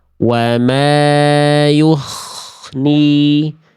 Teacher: Karena huruf goinnya berubah menjadi huruf kho ya.